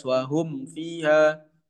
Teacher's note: Harus benar-benar terlepas, harus izhar jelas.